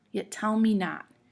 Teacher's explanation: is unstressed tell us dressed me is unstressed not as stressed so it goes unstressed stressed unstressed stressed · Yet and me you say kind of quickly, yet tell me not. And tell and not you kind of say a little longer